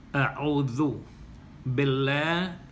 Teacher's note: With that, it begins with Hamza, Hamza with Fatha, then Ain with Fatha, with Dhamma, A'u, and then Zal, the letter Zal that you place your tongue between your teeth, with Dhamma, Zu, A'udhu Billah, the name of Allah, and that is coming after the vowel Kasra, with Ba Kasra B, Billah. · So the Lam Mushaddada in the name of Allah in A'udhu Billah is Tarkik, because of the Kasra that comes before it.